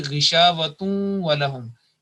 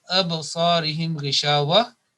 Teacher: we have to make that idgham or joining with nasal sound